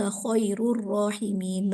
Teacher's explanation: अभी हमने सिर्फ जो बेसिक 2-4 मिसालें पढ़ी हैं उन्हीं को हम यहाँ पे अप्लाई करें। रॉ खैरू, अब यहाँ पे रॉ पे पेश आ रहा है, ज़बर या पेश होता है तो रॉ को पुर पढ़ा जाता है